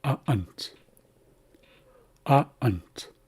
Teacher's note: That's the opening between your vocal cords. So when you make a glottal stop, you're closing your glottis. You're closing off the airflow. So this word comes out as a'ant.